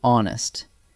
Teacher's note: The H is silent, so the word actually begins with the vowel sound